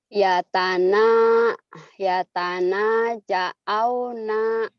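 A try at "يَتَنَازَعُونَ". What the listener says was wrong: Jangan ja'au, kan ini pasangan. Ya Tana za'u.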